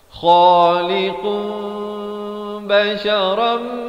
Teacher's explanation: tukarkan bunyi nun kepada bunyi mim, kadar panjang 2 harakat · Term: hukum iqlab